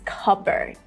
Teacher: The first part is more stressed.